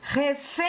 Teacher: Se eu chamar a palavra refém para descobrir qual é a sílaba tônica, eu vou dizer refém. E sei que a sílaba tônica é o fém.